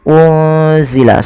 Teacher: menyamarkan nunnya kepada huruf z yaitu bacaan Ikfa Hakiki